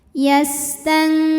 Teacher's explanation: Maka cara bacanya nunnya ini dibunyikan samar-samar, siap-siap menuju huruf kaf disertai dengung. Dengungnya besar karena kaf ini makhrajnya jauh dari nun, yaitu di pangkal lidah. Nah, ini jadi dari nun kita sudah siap-siap menuju kaf ya, sudah nempel ke makhraj huruf kaf. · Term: ikhfa